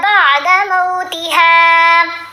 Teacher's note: بعد موتھا، یہ لین حرف ہے، مو آواز بنے گی. میم کے اوپر زبر ہے نا، ساتھ واو ساکن ہے، تو یہ مو، منہ نہیں پڑھنا